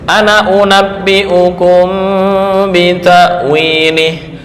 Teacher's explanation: ketika wakaf panjang alif kelihatan, kemudian ketika wasol alifnya hilang